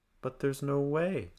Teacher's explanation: going up on no and then falling on way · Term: falling intonation